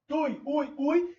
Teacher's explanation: Não tem força nesse i. Então, estamos diante de uma vogal mais uma semivogal. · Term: ditongo decrescente